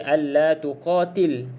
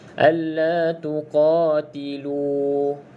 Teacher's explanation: baca panjang 2 harakat ya, sebab ada waw ni. Jangan baca alla tuqatil sebab ada waw lagi ni.